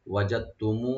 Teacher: দাল এবং তা একসাথে হয়ে যাবে, শুধু তাটা উচ্চারণ হবে এখানে